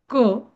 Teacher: क ची अर्धी मात्रा आणि त्याला जेव्हा अ जोडला जातो तेव्हा त्याचं होतं क म्हणजे त्याची होते दीड मात्रा